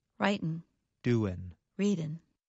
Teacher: In careful speech, Americans pronounce the g at the end of the verb. However, in fast speech, many Americans do not pronounce the g at the end of the verb. The result sounds like this.